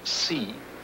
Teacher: So if we take a word like see, you see the unvoiced sound at the beginning and then the voice part at the end